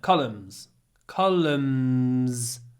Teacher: You can see at the end we've got n, but we don't pronounce the n.